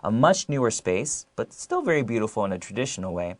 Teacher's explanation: there's a change in my tone of voice to allow the listener to know that I'm just giving some extra information